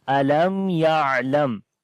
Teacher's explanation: And here is meem sakin, and after the meem sakin the next letter is ya, so that's why we make izhar shafawi here like the clear sound of meem as we say alam ya'lam.